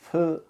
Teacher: 목에 손가락을 갖다 대고 F 하는데 목젖이 떨리질 않아요. 근데 이 F는 아까 발음한 P하고 다르게 윗 이빨로 아랫입술을 살짝 건드려야 돼요. 아까 발음한 P는 파열음이라 그래서 입술이 터지는 형식으로 이렇게 하는데 F는 이렇게 됩니다.